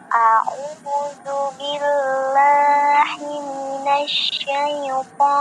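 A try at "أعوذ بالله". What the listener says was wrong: A'udzubillahi, hina kira-kira besar atau hi kecil? Nah, hi besar. Nah, kira-kira ainnya ada terkena hidungnya nggak kira-kira? Terasa nggak di hidung? Nah, masih terasa ya.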